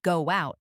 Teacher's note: a small W sound is inserted